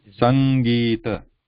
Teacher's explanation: This nga nga is like when we say English, the word English, that's where the nga, there is English. Before ga, in the English word, there is a nga sound. So similar to that, this nga sound, sang, then there is gi and ta.